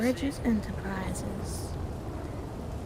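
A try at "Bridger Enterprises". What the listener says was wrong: Bridges with an R, not an S.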